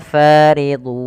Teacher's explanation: ditandai dengan fathah yang bertemu dengan alif setelahnya panjangnya dua harakat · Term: Mad thii